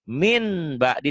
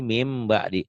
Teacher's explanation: bunyi n-nya jadi m tapi bindeng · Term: iqlab